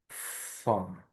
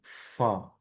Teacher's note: এফ এর মতো হলেও এটা সাউন্ডের উচ্চারণ হবে দুই ঠোঁট দিয়ে বাতাসটা বের করে দিবেন। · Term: ফা সাউন্ড